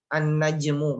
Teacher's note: An-najmu berarti dia gunah. Ada gunah, kita harus berikan 3 harokat.